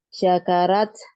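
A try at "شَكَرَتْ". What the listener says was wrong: Jangan sakarat. Iya, ro ya. Ro-nya tebal. Syakarot. Iya, jangan sakarat ya.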